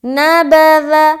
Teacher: ذا کو باریک اور نرمی کے ساتھ نکالیں گے، ذال، سیٹی کی آواز نہیں آنی چاہیے